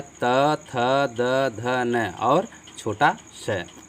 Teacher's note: जब हमारी आवाज़ जो है दंत से टकराती है, दांत से टकराती है, तो उसको हम दंत ध्वनियाँ कहते हैं